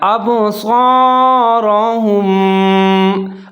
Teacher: اب را کو موٹا پڑھنا ہے کیونکہ زبر ہے اس کے اوپر